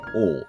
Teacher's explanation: ও হচ্ছে একটি পশ্চাৎ, যেহেতু আমাদের জিহ্বার পশ্চাৎ থেকে ও, গোলাকৃতি, ঠোঁট গোল হয়ে যাবে, উচ্চ মধ্য, জিহ্বাটা হচ্ছে উপরের দিকে মধ্য এবং অর্ধ সংবৃত, মাঝামাঝি থেকে উচ্চারিত হবে ও।